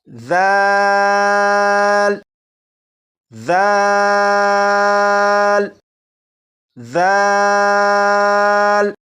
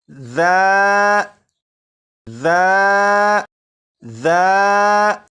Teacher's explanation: और सीडी की आवाज को खत्म करने का बड़ा आसान तरीका आपको मालूम हो चुका है कि जुबान की नोक ऊपर के सामने के दो दांतों के सिरे से लगाकर पढ़ें तो सीडी की आवाज खत्म हो जाएगी।